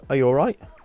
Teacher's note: it has like a rising tone at the end